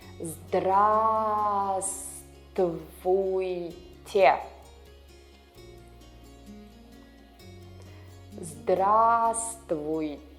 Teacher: The first V here is silent.